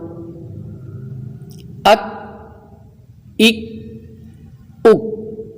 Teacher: یہ باریک کاف ہے، اس میں قلقلہ نہیں ہے، مضبوطی کے ساتھ جماؤ کے ساتھ